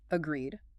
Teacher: The stress is heavily on that second syllable.